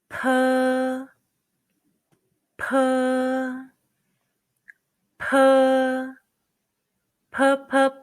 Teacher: It's like the P in the English word pie, but push more and stronger air out from your lips when you say it. Remember, P is pronounced with a strong puff of breath.